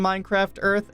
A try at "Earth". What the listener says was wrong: Are you saying Earth or Durf? For some reason, it sounds like you're saying Durf.